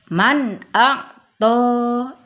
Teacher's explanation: Antara nun sukun dan hamzahnya harus jelas. Kenapa? Karena hukum bacaannya adalah idhar halki.